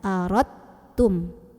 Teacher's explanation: Dari ro tuh kita lewat aja dalnya. Ro langsung tekan ke ta. Aradtum. Jadi udah nggak ada pantulan di dal ya.